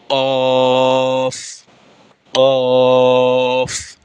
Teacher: জিহ্বার গোড়া তার বরাবর উপরের তালুর সঙ্গে লাগাইয়া 2 নুক্তাওয়ালা কফ।